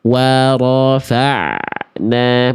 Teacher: bunyi ain dialirkan sedikit, bukan dipantulkan. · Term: ain sukun